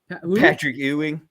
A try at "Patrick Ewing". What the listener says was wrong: Sounds like you're saying you.